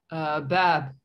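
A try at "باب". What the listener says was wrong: Bab. Very good.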